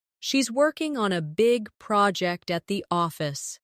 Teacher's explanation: Stress, working, big, project, and office.